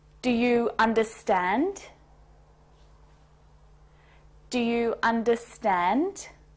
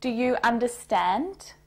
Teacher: my voice goes up at the end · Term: intonation